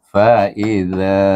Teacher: Hamzah baris ba Hamzah ya I bunyinya fa i baris atas Za hujung lidah dikeluarkan dan bertemu dengan alif dibaca dengan mad asli dua harakat